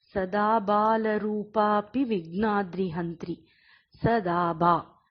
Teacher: the first one is short, which is light, and the next 2 are long, making it heavy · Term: Laghu and Guru Aksharas